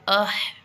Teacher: سانس اس میں جاری رہے گا اور آواز کی رفتار تھوڑی سی کم ہو جائے گی. جیسے دیکھیں ادا کر کے دیکھیں، ہا پورا ادا ہوگا، آواز نکلے گی لیکن آواز بلند نہیں ہوگی، جبکہ سانس اس میں جاری رہے گا ہمارا.